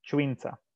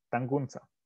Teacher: the village names often either have a voiceless affricate or simply a fricative